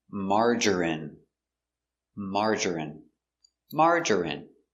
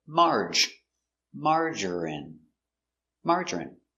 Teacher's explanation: 3 syllables, stress on the first syllable.